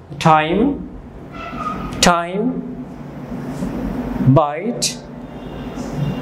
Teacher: আই এখানে দুটো sound আসছে আ এবং ই দুটো মিলে হচ্ছে আই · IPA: /aɪ/